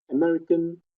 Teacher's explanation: And you see American, so it rises a bit here. American, the first syllable is lower than the other ones.